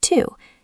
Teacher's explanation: In isolation we say to. It has a long ooh sound. But in a sentence we almost never say to.